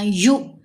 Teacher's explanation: یا کو جب حمزہ ساکن سے ملایا تو جھٹکا دیا، ٹھیک ہے، یؤتون نہیں پڑھنا، یو۔